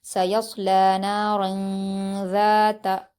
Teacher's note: تنوین کی آواز کو ناک میں چھپا کر غنہ اور اخفا کے ساتھ پڑھا جائے گا